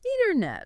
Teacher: That middle T often gets softened or dropped completely. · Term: dropped sounds